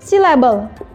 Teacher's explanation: Konsonan L ini dipronouncekan atau dibunyikan as a separate syllable, sebagai syllable yang terpisah.